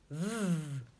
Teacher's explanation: Elle met ses dents du haut en contact avec sa lèvre du bas et elle souffle en faisant du bruit. Je dis bien en faisant du bruit parce que sinon il y a presque le même son qu'on confond et après on doit aller faire de l'orthophonie ou beaucoup d'exercices.